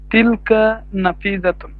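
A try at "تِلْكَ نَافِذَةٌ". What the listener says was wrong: মাশাআল্লাহ, নুনের মধ্যে একটা টান হবে, হ্যাঁ, তিলকা নাফিদাতুন, তাই না?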